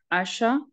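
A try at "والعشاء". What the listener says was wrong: Wal isha, not asha.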